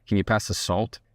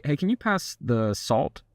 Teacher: So when you end on a lower note, it sounds more serious.